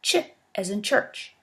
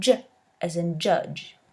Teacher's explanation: The voiceless symbol represents the sound ch as in church, and the voiced one the sound j as in judge.